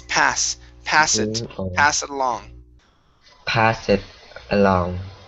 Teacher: give me an unvoiced s instead of passes it